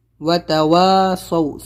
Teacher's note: صاد و زبر سو لمبا نہیں کرنا ہے، نرم آواز سے جلدی بولنا ہے